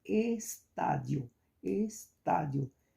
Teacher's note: então a antepenúltima é a mais forte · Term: proparoxítonas